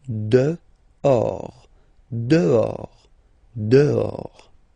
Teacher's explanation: Okay, so remember, final S not pronounced, and then this H in French doesn't exist phonetically, so you don't pronounce it